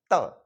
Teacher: त बोलने के लिए जीभ जो है दांतों से टच हुई